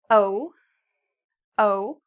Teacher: It's actually kind of in the middle. It's not ooh, it's not very, very tiny, but it's also not ah, very big.